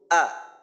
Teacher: জবর দিয়ে উচ্চারণ করব হামজা জবর আ এই আ যখন বলবো এই আ বলার সময় হলকের শুরুর অংশ ব্যবহার হবে একেবারেই হলকের শুরু · এই আ বলার সময় হলকের শুরুর অংশ ব্যবহার হবে, একেবারেই হলকের শুরু, যেটা কিনা আমরা বাংলা স্বর অ বা স্বর আ উচ্চারণের জন্য আমরা গলার যে অংশের ব্যবহার করি ওইটাই হলো হলকের শুরু।